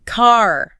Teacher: Americans tend to pronounce Rs very clearly, especially at the end of words. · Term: the R sound